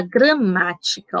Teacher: sabemos que o má é a sílaba tônica, porque ela é mais forte